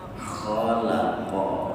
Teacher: Khalaqa, kha-nya tebal, qaf-nya juga tebal. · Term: huruf tebal